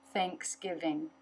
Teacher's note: Tongue through the teeth for the TH. Tongue up in the back to make the NG.